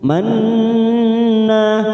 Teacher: huruf nun yang bertasdid namanya gunnah musaddadah. Kita tekan 3 ketuk. Manna. Nanya kita panjangkan 2 harokat.